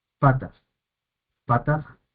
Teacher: el acento recae sobre la primer sílaba